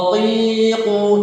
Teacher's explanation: Selanjutnya, pangkal lidah dengan langit. Ini bagian belakang pangkal lidah, pangkal ya, bertemu dengan langit.